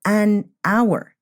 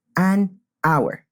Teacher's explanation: We don't say a hour because the H is silent and we pronounce like the O sound, an hour. Be very careful and practice with some extra examples.